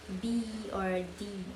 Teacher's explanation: The first is voiced consonant. The vocal cord come together and vibrate while the sound is being produced